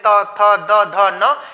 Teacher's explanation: इनके उच्चारण में जीभ हमारी दांतों को स्पर्श करती है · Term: दंत्य